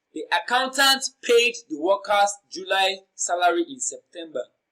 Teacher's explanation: The emphasized word here is accountant.